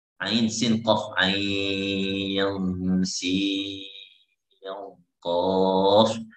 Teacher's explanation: dibaca 4 harokat atau 6, boleh 4 boleh 6, yaitu ain